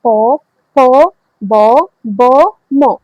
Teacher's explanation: এগুলো যখন উচ্চারণ করতেছেন তখন আপনার ঠোঁট দুটোটা একসাথে লাগতেছে। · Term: উষ্ট ব্যঞ্জন